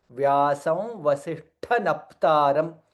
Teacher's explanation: Here Vasishtha Shakara and Tha Mahaprana